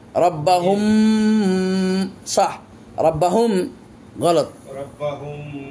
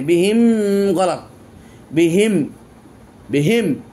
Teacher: প্রথমটা রব্বাহুম গুন্না হয়েছে কিন্তু বিহিম এখানে আর গুন্না হয়নি